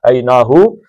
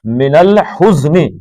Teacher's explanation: ہو سینے کی طرف سے جو ہا نکالنا ہے حلق سے، اور یہ ہا جو ہے یہ گلے کی طرف اوپر کی طرف سے نکالنا ہے